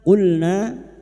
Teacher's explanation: na fathah diikuti alif dua harakat mad thabi'i Dua harakat kita panjangkan.